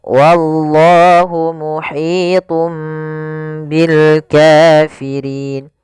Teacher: pada lafal Allah di sini lam tebal lafzul jalalah lamnya tebal